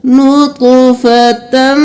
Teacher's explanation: غنہ کے ساتھ ہم تا کو میم میں مدغم کریں گے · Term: ادغام مع الغنہ